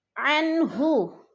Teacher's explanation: عن پہ اظہار ہو رہا ہے، نون ساکن کے بعد ہا حروف ہلکی میں سے آ گیا ہے تو ادھر اظہار ہے، لفظ کو ہم نے ظاہر کر کے پڑھنا ہے، چھپانا نہیں ہے۔